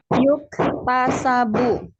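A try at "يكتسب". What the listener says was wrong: Mumtaz.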